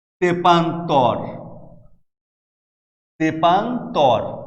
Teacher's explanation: এই প্রত্যেকটি উদাহরণে দেখো যে সংখ্যাবাচক উপসর্গ তে যুক্ত হয়েছে এবং তে যুক্ত হয়ে নতুন নতুন শব্দ তৈরি করেছে, এবং এই কারণে এই এ উচ্চারণগুলো স্বাভাবিক উচ্চারণ হবে, অর্থাৎ সংবৃত উচ্চারণ হবে